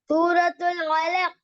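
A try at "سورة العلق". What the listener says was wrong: கலக் அல்ல, ஐன் வரணுமா? சூரத்துல் அலக், சவுண்ட் தான் வரணும்.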